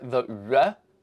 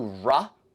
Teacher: the weird Cockney lip approximant R